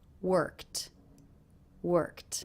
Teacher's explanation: the ED ending here is pronounced as a T sound? That's because the sound before, the K, is unvoiced.